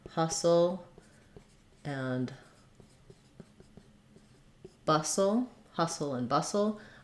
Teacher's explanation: maybe the main stress is on bustle but we still have some stress on the Huss of hustle as well